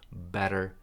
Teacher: Something that you do, again short, you do, that gives you a connection here, z here, gives you a better, this is a flap T, so it sounds like a D